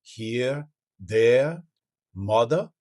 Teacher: And the R sound, most Cajun accents tend towards being non-rhotic, meaning dropping that R after the vowel.